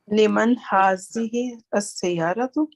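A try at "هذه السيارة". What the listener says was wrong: we have to join ha of hazihi with the sin. Hazihi sayyaratu.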